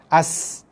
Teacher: Sebab sin bila berbaris mati, dia ada sifat desiran. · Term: sifat sofir